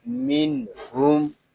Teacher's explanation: میم نون زیر من، یہاں نون ساکن ہے، اس کو سکون کے ساتھ ادا کریں گے، اس کو من اس طرح نہیں پڑھیں گے، اس کو پڑھیں گے من۔ یہاں نون ساکن میں اظہار ہوگا، اس کو اظہار حلقی بھی کہتے ہیں۔ یہاں اظہار اس لیے ہو رہا ہے کہ نون ساکن کے بعد حروف حلقی میں سے ہا آ گیا ہے۔